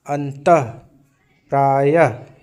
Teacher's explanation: विसर्ग जो है वो ह सुनाई पड़ता है